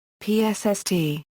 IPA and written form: psː (Psst)